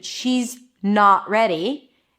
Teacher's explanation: when I choose the first option, she's not ready, then it feels like I'm emphasizing the word not a bit more